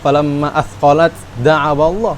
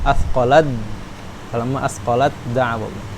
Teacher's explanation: Jadi jangan menyebutkan falamma athqalat da'awallah. Taknya itu udah hilang dah, langsung ke dal.